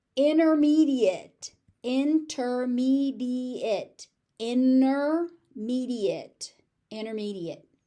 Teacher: The T just disappears unless I am stressing it and trying to point out that I'm talking about the intermediate level instead of the advanced level.